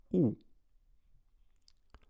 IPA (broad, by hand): u